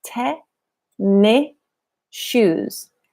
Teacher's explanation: it's connected it's blended it actually sounds like Ted May shoes the S at the end of tennis disappears it blends into shoes